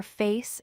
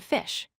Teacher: the SH sound is thicker and fuller